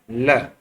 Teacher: पार्श्विक व्यंजन यानी कि जिसके अंदर ध्वनि साइड से निकलती है, पार्श्व भाग से निकलती है